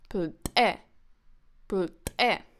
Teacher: plte is stressed on the second syllable